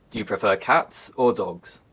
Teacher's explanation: in contrasting questions the intonation Rises then Falls